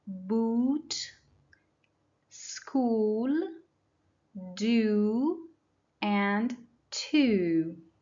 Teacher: the second sound is oo, like a very long oo.